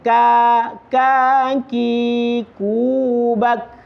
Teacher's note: Sifat hamas itu artinya berdesis sedikit, tapi tidak usah terlalu berlebihan, Pak. Tidak sama dengan sin.